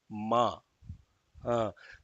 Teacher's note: no tongue is used only lips